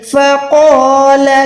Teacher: قوف الف زبر قو، قوف اور الف دونوں موٹے ہیں کیونکہ الف سے پہلے جب بھی موٹا حرف آتا ہے تو ہم نے اس کو موٹا ادا کرنا ہے